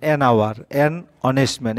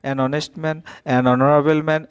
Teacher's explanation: The beginning letter of all the above words are H. Here the sound of H is silent